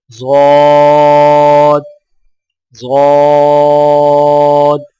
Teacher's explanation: ضاد کی ادائیگی میں زبان کے پچھلے حصے کو تالو کی طرف بلند کرتے ہوئے زبان کے موٹے کنارے کو اوپر والی داڑوں کی جڑ پر آہستہ آہستہ نرمی سے لگا کر خوب موٹی اور دراز آواز میں پڑھیں، یعنی ضاد ضاد۔